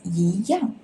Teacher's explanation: It is before fourth tone syllables, so you need to shift to second tone